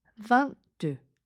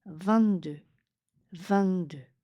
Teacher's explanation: Vous allez prononcer 20 en position du T, 22, mais c'est le 2 qui arrive derrière. Donc le T n'est pas prononcé vraiment, c'est vraiment comme un T qui est bloqué.